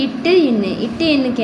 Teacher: நாவின் நுனி அன்னத்தின் நுனியை பொருந்துவதால் பிறக்கும் எழுத்துக்கள்.